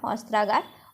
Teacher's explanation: অস্ত্র শব্দের শেষে অ ধ্বনির আর আগার শব্দের শুরুতে আ ধ্বনি মিলিত হয়ে আ ধ্বনিতে পরিণত হলো এই যে দুটি স্বরধ্বনির ছোট ব্র্যাকেটে বা স্বরবর্ণের মধ্যে মিলন ঘটলো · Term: স্বরসন্ধি